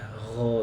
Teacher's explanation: huruf gain ada getarannya cuman dia lembut ya gho gituho tidak sampai sekasar ko ya lembut yaho kalau ko